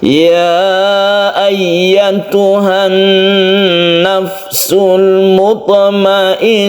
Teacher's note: Di sini ada dua yang dengung tasydid nun. Kalau tasydid nun yang belakang ini adalah guna musyaddada karena dia asli tasydid.